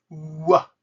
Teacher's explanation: It's made by opening your mouth when you're already pronouncing ooh. Wah. That's how you pronounce the W sound.